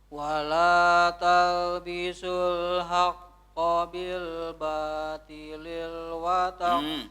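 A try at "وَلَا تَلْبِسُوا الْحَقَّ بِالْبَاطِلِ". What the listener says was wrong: Bil batili wa tak. Enggak ada lilnya. Enggak ada lilnya ya.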